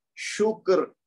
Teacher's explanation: وہ ویسے ہی ساکن ہے. تو اس سے پہلے شین پہ پیش ہے، تو اب اس پیش کی وجہ سے یہ را موٹا پڑا جائے گا